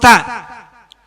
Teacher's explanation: Ujung lidah menempel pada pangkal gigi kelinci atas, sifatnya ada 5. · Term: huruf ta